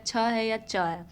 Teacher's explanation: च वर्ग किससे होते हैं ताल से होते हैं